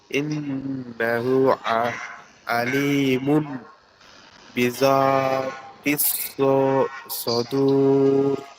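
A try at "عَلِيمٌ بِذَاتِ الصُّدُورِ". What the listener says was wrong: আলিমুম হবে কিন্তু এখানে মিম মিম পেশ মুম।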